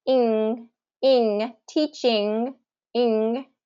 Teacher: the back of your tongue is what's closing off your mouth, or that airflow in your mouth. And then you're going to kind of release it into the G. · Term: ing sound